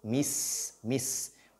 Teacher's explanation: La lettre sin a ce qu'on appelle al-rakhawa. Il faut donc laisser le son couler.